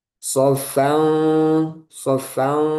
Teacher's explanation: Nah, sedangkan ikhfa itu tengah-tengah antara idhar dan idgham. Jadi nunnya tidak dibaca jelas dan juga tidak diidghamkan ke huruf setelahnya.